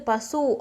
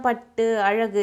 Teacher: பார்த்தீங்கன்னா அது என்ன சொல்லுவாங்கன்னா முற்றியல் உகரம் அப்படின்னு சொல்லுவாங்க ஏன்னா இங்க எழுத்து பசு அப்படின்னு சொல்லும்போது சு அப்படின்றது ஒரு மாத்திரை அளவு முழுமையா ஒலிக்குது சு அப்படின்றது குறில் எழுத்து குறில் எழுத்துக்கு எவ்வளவு மாத்திரைன்னா ஒரு மாத்திரை அளவு